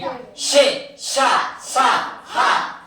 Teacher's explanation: ఉష్మాలు అంటే ఊది పలికేవి. షే ష స హ అని గాలిని నెట్టుతూ గాలిని బయటికి వదులుతూ పలుకుతాం